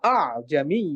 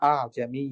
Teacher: দ্বিতীয় হামজাটাকে সহজ করে হালকা করে আংশিক উচ্চারণ করে পড়তে হবে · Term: হামজা হালকা